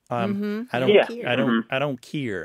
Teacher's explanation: Another thing to point out about this is that the care is often pronounced keer.